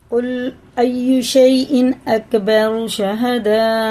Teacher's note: یا ساکن سے پہلے زبر ہے، جلدی پڑھیں گے، کھینچیں گے نہیں